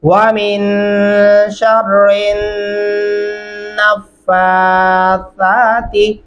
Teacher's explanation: शीन को रा के साथ, फिर रा को उठा के हमने नून के साथ मिलाना है।